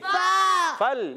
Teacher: फा का मखरज है ऊपर वाले दांतों के किनारे, जब नीचे वाले होंठ के तर हिस्से से लगते हैं तो अदा होता है फा।